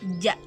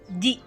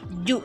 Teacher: Bagian tengah lidah berhadapan dengan langit-langit sebelah tengah.